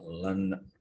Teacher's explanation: The Chandra Bindu is nasalization of the vowel. The vowel is pronounced with the nose. It's called nasalized vowel.